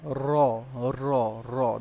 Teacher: র যখন উচ্চারণ করেন না তখন একদম কয়েকটা কম্পন সৃষ্টি হয়ে যায়। কাপন সৃষ্টি হয়ে যায়। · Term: কম্পনজাত ধ্বনি